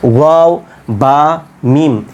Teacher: এই তিনটি উচ্চারণ হবে দুই ঠোঁট থেকে